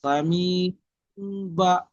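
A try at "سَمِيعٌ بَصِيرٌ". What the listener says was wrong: বা, একটু বেশি গুন্না করতে হবে। সদ ইয়া র, তিনটে একসঙ্গে বলতে হবে।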